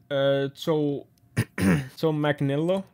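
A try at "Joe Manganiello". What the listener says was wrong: You skipped the I bet it's Manginello. You skipped the A and I. I believe you skipped the A and I. So it's like Manginello.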